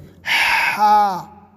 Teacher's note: ہا کو جو ہے حلق سے پڑھیں گے، ہوا تیز نکال کر، اس طرح سے ہا، اور کھینچنا نہیں ہے، ہوا تیز نکال کر کے حلق سے بولنا ہے اور منہ کھولنا ہے، زیادہ کھینچنا نہیں۔